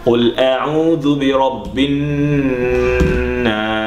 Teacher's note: The noon with shadda or ghunna, in simple tajweed term, we are supposed to apply to spend what is estimated to be 1.5 seconds.